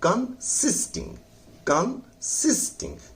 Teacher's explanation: कंसिस्टिंग, कंसिस्टिंग, तो सिस पर जोर लगे, कंसिस्टिंग, कन को हल्का पढ़ेंगे, सिस जोर पर